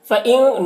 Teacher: فَإِن نون میں اخفا ہوا، نون کی آواز کو ناک میں چھپا کر پڑھیں گے